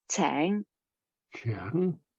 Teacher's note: also a mid-rising second tone, meaning to treat, which is tang.